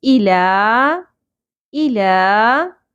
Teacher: ای لا ای short ہوگا، حمزہ کے نیچے سنگل زیر ہے، لام کے اوپر کھڑی زبر ہے، مد اصلی ہے، اس کو ایک الف کے برابر کھینچیں گے. الا الا ربک را پر ہوگا.